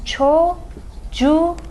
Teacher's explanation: So that K became a yumuşak G because of this suffix that starts with a vowel